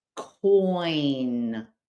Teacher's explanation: So, for example, in the word coin, the vowel sound oi combines the O and the short I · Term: diphthong